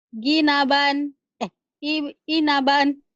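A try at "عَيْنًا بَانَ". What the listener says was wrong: Ain itu kurang. Ainaban.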